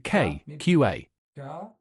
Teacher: Here it really is the position of the tongue that releases and lets the sound out, so you can't prolong it. It really is an explosion. So it's fairly close to the K but lower, K, QA. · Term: plosive letter